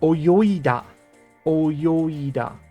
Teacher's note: The g sound is getting lost completely.